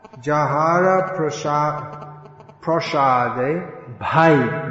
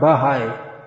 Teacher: It's a complete sound in itself, and you can't insert you can't separate the ba and the ha